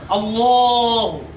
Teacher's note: লামের উপরে খারা জবর আছে, এক আলিফ পরিমাণ টেনে পড়তে হবে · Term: মধ্যে বদল